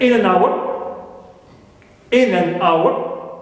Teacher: Now, hour is carrying the extra stress, so it is my tonic syllable. And in an, both preposition and also article, they are unstressed. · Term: prehead